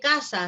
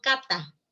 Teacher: el rasgo fricativo frente al oclusivo